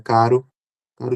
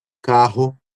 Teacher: São produzidos diferentemente, né? O caro aqui com a língua nos alvéolos e o rato já com a glote. São pronúncias distintas, tá?